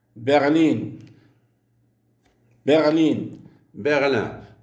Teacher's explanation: Berlin est accentué sur la deuxième syllabe.